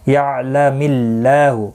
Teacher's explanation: اللہ کا لام زیر کی وجہ سے باریک پڑھا جائے گا. اس کے اوپر کھڑی زبر بھی ہے، ایک الف کی مقدار کے برابر کھینچ کر پڑھیں گے.